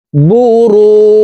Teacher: রু এখানে তিন আলিফ টেনে জিমকে সাকিন করে ফেলতে হবে কারণ মদের হরফের বামের হরফে ওয়াকফ হইলে মধ্যে আরজি তিন আলিফ